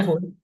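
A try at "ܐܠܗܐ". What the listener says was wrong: yeps. Aloho, ya betul.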